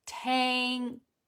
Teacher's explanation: we make the k in the back of the mouth